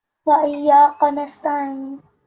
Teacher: This is an ayn sound. You have to pronounce that as an ayn from your throat.